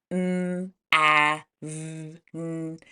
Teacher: when we say these sounds like m a v n our voice is vibrating and our voices are on